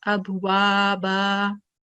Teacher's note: we just take one fatha stroke with alif and we make it haruf madda and we read it 2 seconds.